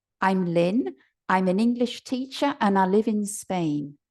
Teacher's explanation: The D has disappeared from the and because I'm speaking very quickly. And I've weakened the pronunciation of the pronoun I, and I'm saying ah. Now I say ah because I'm from the north.